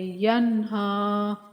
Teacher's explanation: نون ساکن کا یہاں پر اظہار کریں گے کیونکہ اس کے بعد حروف حلقی میں سے ہا ہے، اس لیے یہاں پر اظہار کریں گے۔